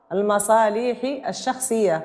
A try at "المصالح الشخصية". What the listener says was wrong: المصالحي ما تمديش اللام. المصالحي الشخصية.